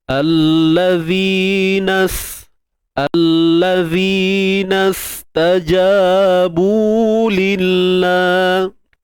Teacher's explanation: Huruf zal ni kita keluarkan sedikit hujung lidah.